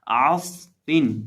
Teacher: نچلے ہونٹ کا وسط جب سامنے والے اوپر کے 2 دانتوں کے کنارے سے لگتا ہے تو فا ادا ہوتا ہے